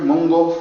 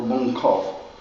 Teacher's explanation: So it feels like a vowel to that K. So that K becomes voice and has that G. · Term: the G sound